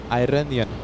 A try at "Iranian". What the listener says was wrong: You still said I. Iran.